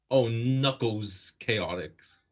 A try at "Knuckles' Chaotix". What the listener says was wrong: Knuckles' Chaotix. It's plural, so it's Knuckles' Chaotix, not Knuckles Chaotix.